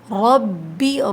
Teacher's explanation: را کے اوپر زبر ہے، موٹا پڑھیے